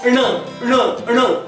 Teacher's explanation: दाताला चिकटणारं जे जिभेचं टोक आहे ते मागे टाळूच्या दिशेने गेलं पाहिजे